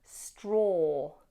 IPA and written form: strɔː (straw)